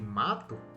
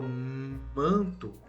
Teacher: o som sai pelo nariz, ele ressoa pelo nariz. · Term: nasal